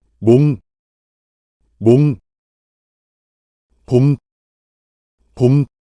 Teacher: the characteristic of pronouncing the initial consonant mium in Korean by separating the lips rather than sticking them together is crucial